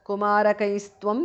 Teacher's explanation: Kumarakaihi visarga changes to su there.